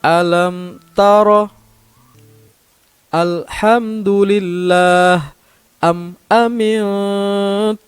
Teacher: suara mim sukun dibaca jelas yang kedua tidak mendengung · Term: Izhar Syafawi